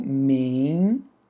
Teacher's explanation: Esse N é apenas uma marca de nasalização, ele não tem ali um som próprio